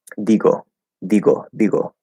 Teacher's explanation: the D and T in Spanish is a dental T and D